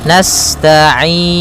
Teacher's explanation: sifat sinnya sempurnakan dengan mengalirkan nafasnya.